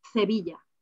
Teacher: In Seville, they use the th sound.